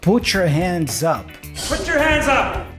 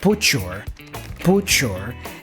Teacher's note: the T for put is joined with the Y for you and it has that cha cha sound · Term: connected speech